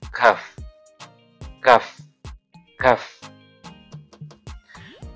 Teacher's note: Jadi pangkal lidah bagian belakang ya. Sekarang pangkal lidah tapi agak ke depan sedikit. Itu huruf kaf.